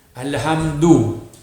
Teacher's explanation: huruf dai tu, hujung lidah kita pada gigi. Gigi atas.